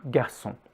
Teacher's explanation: Just keep it as light as possible, sometimes just barely a little growl in the back of the mouth, like in garçon